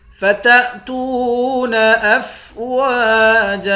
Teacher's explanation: واو کے بعد الف ہے، الف حروف مدہ ہے، ایک الف کے مقدار کھینچیں گے۔ جیم کے اوپر دو زبر ہے، دو زبر کی تنوین میں جب وقف کرتے ہیں ایک زبر بن جاتا ہے۔